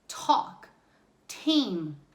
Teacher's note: it's almost like a t plus h but not th